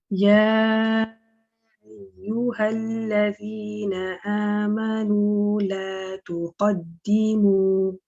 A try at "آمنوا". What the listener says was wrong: آمنوا, just be careful. The meme was a little bit heavier than the hamza, so it's like ama, right? Ama. When you separate the lips, let the voice come out. Okay, ama, amanu.